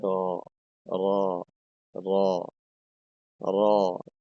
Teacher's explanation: জিহ্বার আগার পিঠ তার বরাবর উপরের তালুর সঙ্গে লাগিয়ে উচ্চারিত হয়